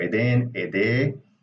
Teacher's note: and you lose the noon. You can say edenu.